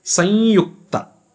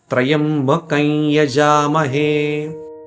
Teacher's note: So you say Sanyukta. The Anuswara takes on the sound of the alphabet after it with nasalization. So here, if you see, Anuswara is followed by Ya. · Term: Anunasika